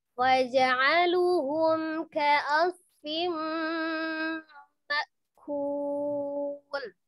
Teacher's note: Ini juga termasuk yang idgham bi gunnah. Ada mim tasdid tapi sebelumnya dia ada tanwin ya atau ada nun sukun. Jadi dihukumi idgham bi gunnah.